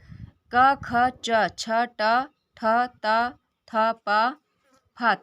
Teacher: इन वर्णों के उच्चारण में प्राणवायु प्रकंपन नहीं होता, इसलिए इन्हें अघोष कहते हैं